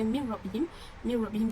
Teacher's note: Yang seterusnya saya gariskan pada mim rabbihim tu adalah idgham bila gunnah, idgham bila gunnah sebab huruf nun sukun bertemu dengan huruf ra tasydid, dibaca tanpa dengung, ini tanwin tu hilang.